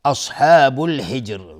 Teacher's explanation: صاد از حروف استعلاء غلیظ تلفظ میشه. الف لام قمری است.